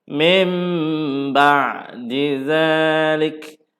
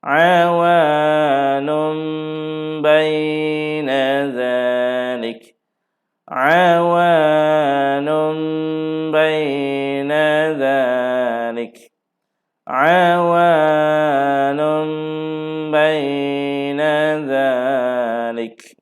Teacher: Ayat ni nun mati bertemu dengan ba, ditukarkan nun mati itu. Jadi nun mati itu memang kita tak bunyilah, kita bunyi mim mati je. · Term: hukum iklabnya